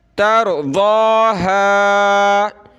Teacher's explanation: قبلة، قبلة ترضاها، را اور ضاد کا یہ کلر موٹا کرنے کے بارے میں ہے، را کو موٹا کریں گے، ضاد کو موٹا کریں گے